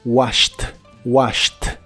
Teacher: y en el pasado es washed es un verbo regular y la terminación Ed se pronuncia como t